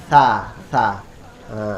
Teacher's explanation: Kalau tarafnya adalah ujungnya. Jadi ujung lidah, lidah cara mengucapkannya dengan mengintip keluar sedikit lidah, menjulur keluar sedikit. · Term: lidah keluar